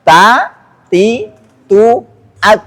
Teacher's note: Kalau disebutin ta ada nafas yang mengalir ah yang menyentuh telapak tangan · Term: hams